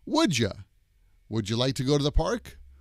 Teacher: So that's how we usually pronounce would you, as would ya.